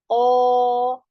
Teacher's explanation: Lalu pangkal lidahnya naik ya. O, pangkal lidahnya naik. Suaranya mengarah ke langit-langit atas. Sehingga membuat suara itu terdengar lebih tebal. Tetap harus diperhatikan bibir tidak maju ya. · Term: huruf isti'la